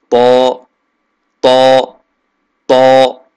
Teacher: होता है तीनों रूफ के अंदर नोक इस जगह से लगेगी लेकिन ता और दाल की निस्बत त के अंदर जबान पीछे से उठी हुई होगी